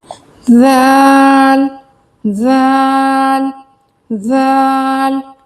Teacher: जो हमारे ऊपर वाले जो 2 दांत हैं उन पर जबान की नोक लगेगी